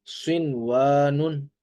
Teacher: مستثنی کلمات ہونے کی بنا پر یہاں پر نہ تو ادغام ہو رہا ہے اور نہ ہی گنہ ہو رہا ہے